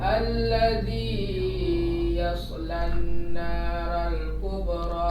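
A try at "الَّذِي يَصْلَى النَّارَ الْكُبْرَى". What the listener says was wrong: Alladzi dipendekkan sekali lagi, jangan panjang kali. Alladzi yaslan naral kubra.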